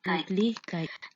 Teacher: From the native recording, we can see that the first syllable has the longest duration and also the highest pitch. However, the participant stressed out the penultimate syllable, lich. As we can see here, the penultimate syllable, lich, has the longest duration of 0.26 seconds, the highest pitch of 235.5 Hz, and the maximum intensity of 75.9 decibel.